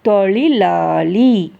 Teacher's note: மூணு லகரமும் இதுல வருது நாக்கு அந்த மூணு இடத்தையும் தொடுறதை நீங்க கவனிச்சு பாருங்க தொழிலாளி மூணு இடத்துலயும் நாக்கு கண்டிப்பா டச் பண்றதை கவனிங்க சரியா இந்த மாதிரி · சிறப்பு லகரம் சொல்லும்போது நாக்கு நல்லா உள்ள வளைஞ்சு சொல்லும்